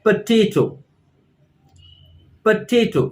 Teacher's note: the stress is on the second syllable or the second part of the word potato